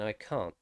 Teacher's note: i'm saying i can't and i'm dropping the t so it's just cun for americans because they have that sound